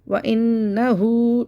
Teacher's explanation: नून मुशद्दद को गुन्ने के साथ पढ़ेंगे